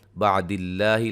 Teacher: लफ्ज़ अल्लाह के लाम को बारीक पढ़ेंगे, मद्दे असली है।